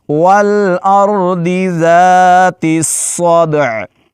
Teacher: सद को मोटा करके पढ़ेंगे। दाल पर जज्म है और यह हरूफ कलकला में से है।